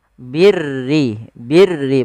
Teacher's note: huruf ro yang dibaca dengan tipis Yaitu ro tarqik yang di mana huruf rnya berharakat dengan berharakat kasrah maka birri